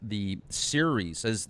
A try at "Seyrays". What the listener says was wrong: It's actually pronounced Seyrays, as if it was spelled SEY-REHS, or Seyrays. It's not series like the World Series, it's Seyrays.